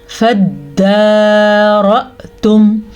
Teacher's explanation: جی را کو پر پڑھیں گے کیونکہ را کے اوپر زبر ہے, حمزہ پہ جھٹکا پیدا ہوگا حمزہ کے اوپر ساکن کی وجہ سے